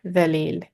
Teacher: in Arabic, it's dhalil with the tip of our tongue between the front teeth. We're touching the bottom of the front teeth. Dhalil, soft, thin, smiley expression, which makes it thin sounding.